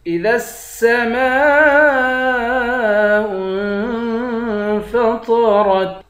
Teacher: میم کے بعد الف ہے، الف حروف مدہ ہے، اس پر مد ہے۔ اس مد کو 5 الف کی مقدار کھینچ کر پڑھتے ہیں۔ حمزے کو نون سے ملا کر نون پر اخفا کریں گے۔ · طا اور را دونوں کو موٹا پڑھیں گے۔